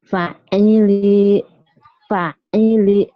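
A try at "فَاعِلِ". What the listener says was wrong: Fa-nya panjang. Fa'ili.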